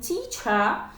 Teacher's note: For example, in teacher, we have the phoneme t and the vowel, the long e, is stressed and longer than t